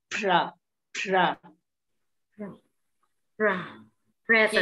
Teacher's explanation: Mọi người nhớ cái âm là mọi người phải bật ra. Bật ra đến độ mà khi mà mọi người có một tờ giấy để trước mặt đó, là nó bay luôn.